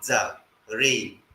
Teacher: it's usually written z just pure z but it's usually pronounced dz